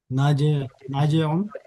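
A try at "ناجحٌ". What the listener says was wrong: नाजिहुन, हाँ हा के साथ नाजिहुन, ठीक है।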